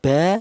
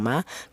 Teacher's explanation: untuk huruf mim dan huruf ba ini dihasilkan dari kedua bibir yang rapat. Baik bibir atas atau bibir bawah itu nempel rapat dulu.